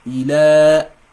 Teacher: So what it does is that it's replacing the normal long med, but it's going to have the same 2 sound elongation as well. It's gonna have 2 seconds elongation, so it's gonna be ila. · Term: tiny med